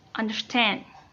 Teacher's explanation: 2 syllables di depan yang tidak ditekankan, diikuti oleh 1 syllable di belakangnya yang ditekankan